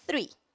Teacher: Three, de 3, também não vibra.